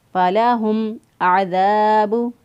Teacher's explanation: با ہے، لہٰذا اظہار شفوی ہوگا، میم کی آواز کو ظاہر کریں گے · شفوی ہوگا، میم کی آواز کو ظاہر کریں گے، فَلَهُمْ عَذَابُ، عین کو وسط حلق سے ادا کیا ، دال کو نرمی سے ادا کیا، دال زبر الف دا،